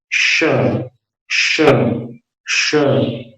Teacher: इसको तालव्य श बोलते हैं क्योंकि तालू पर दबाव देकर के इसका उच्चारण होता है, उसके लिए जीभ को नीचे सेट करना होगा।